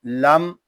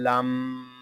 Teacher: میم شدد ہے، اس کو غننے کے ساتھ ادا کریں گے، اس کو لم اس طرح نہیں پڑھیں گے، اس کو پڑھیں گے لم.